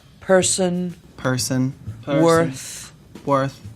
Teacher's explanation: people in boston will round the lips a little bit so the vowel will feel more forward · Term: strong er